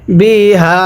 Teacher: এই হায়ের মধ্যে 3 আলিফ টানতে হবে, মজার হরফের উপর চিকন চিহ্ন, এরপরে লম্বা হামজা 3 আলিফ টানতে হয়।